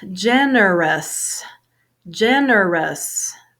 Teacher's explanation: three syllables first syllable has a stress